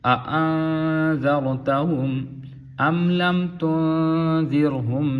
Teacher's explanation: یہاں پہ دو حمزے ہیں تو تسہیل کے ساتھ یعنی آسانی کے ساتھ پڑھیں گے۔ کوئی یہاں پہ جھٹکا ہم نہیں دیں گے، جھٹکا یہاں پہ کوئی نہیں دیں گے، آرام سے تسہیل کے ساتھ پڑھیں گے۔